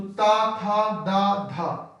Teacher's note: पहला होता है अल्पप्राण, दूसरा महाप्राण, फिर अल्पप्राण, फिर महाप्राण, फिर अल्पप्राण।